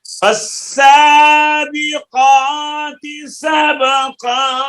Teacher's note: सीन पुर नहीं होती, ये बारीक है